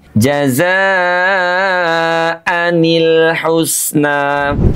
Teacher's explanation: Tentu tidak dibaca jaza alhusna karena nun sukunnya menjadi hilang. Maka untuk menyelamatkan kedua pertemuan huruf sukun ini jazaan dengan alhusna salah satunya harus dihidupkan dengan menambah bunyi harakat kasrah pada nun sukun.